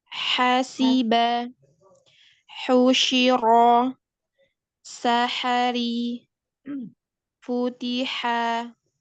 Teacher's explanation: ha itu keluar dari tenggorokan bagian tengah